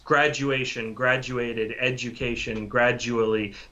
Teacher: The j sound is exactly right. So the du in English also usually makes that j sound